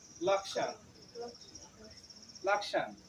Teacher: পাবে আর যদি যুক্তক্ষ মাঝে থাকে অথবা শেষে থাকে শব্দের তাহলে ক এবং মূর্ধন্য স্ব দুটার উচ্চারণই করতে হবে কারণ আমরা জানি সংস্কৃতে সংযুক্ত বর্ণগুলোর প্রত্যেকটি বর্ণে আলাদা করে উচ্চারণ